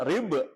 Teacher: ba yang sukun, ba yang mati, hukumnya dibaca qalqalah. Qalqalah artinya nyeklok atau mantul.